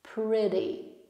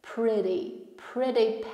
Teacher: Tutaj mamy flap T, double T, wymawiane bardziej jak ry. Pretty. D połączone z ry.